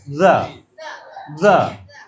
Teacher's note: এই দটা এত শক্ত করে দ না, একটু পাতলা করে the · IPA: /ð/